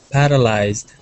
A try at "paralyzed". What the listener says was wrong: So there's a little bit of a roll on your R. You're saying paralyzed. So try saying paralyzed. And keep your tongue. It's not allowed to touch anything else in your mouth. So keep your tongue back. Paralyzed. I'm keeping it.